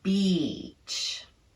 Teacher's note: on the vowel the tongue is kept high and tense maintaining contact with the molars and the duration of the vowel is lengthened